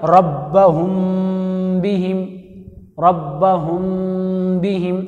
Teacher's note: اگر میم کے بعد با آئے تو وہاں پر غنہ کے ساتھ پڑھنا چاہیے